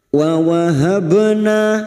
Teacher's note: ba sukun yang mati asli di tengah kalimat qalqala sugro jangan lupa dipantulkan